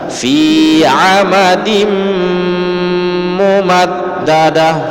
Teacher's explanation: Perhatikan dimnya itu dengung karena tanwin bertemu dengan huruf mim, maka dia idgham bi gunnah.